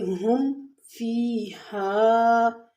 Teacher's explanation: ہم میں میم ساکن کے بعد با اور میم کے علاوہ فا ہے، تو یہاں پر بالکل اظہار ہوگا